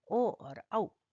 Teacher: ओ और औ, इन दोनों का उच्चारण स्थान होता है कंठोष्ठ, इसलिए इन्हें कहते हैं कंठोष्ठ वर्ण